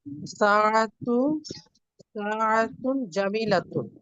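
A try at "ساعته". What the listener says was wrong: সাআতুহু, এখানে হা আছে দেখেন।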